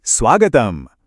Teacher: तो हमारा shape shifter नियम फिर से काम करेगा और उ बदल गया आधे व में